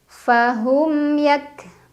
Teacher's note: yang bertemu dengan huruf ya dibaca yang sukunnya jelas fahum yak kafnya dibaca syiddah ya suaranya tertahan